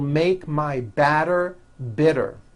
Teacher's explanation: notice that you do not hear any T sounds TT they're only D's d d which your voiced go over